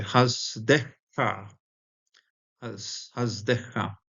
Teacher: Chesed is usually a segolate, double segolate, and with the milal accenting, but both the segolate aspect and the milal accenting, because of the agglutination here of the kaf, the kaf here at the end, we're going to lose both the segolate and the milal accenting. It falls to a milra.